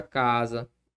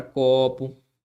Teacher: a sílaba tônica ocupa a penúltima sílaba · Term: paroxítona